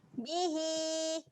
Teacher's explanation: kita panjangkan bunyi huruf ha sebanyak 2 harakat